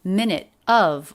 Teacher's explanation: minute of linked together with a flat t